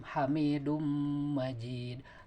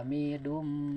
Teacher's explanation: Ya, ini idgham. Tanwin menghadapi mim. Hamidum Majid. Ditahan agak lama ya. Hamidum. Yaitu 2 sampai 3 harakat.